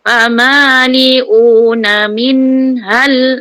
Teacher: non jumpa ha jelas jangan dengung